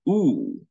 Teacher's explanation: is described as high vowel but it is not located in the front because we need to retract the body of our tongue we need to move back the position of our tongue so · high vowel but it is not located in the front because we need to retract the body of our tongue we need to move back the position of our tongue so it belongs to positive back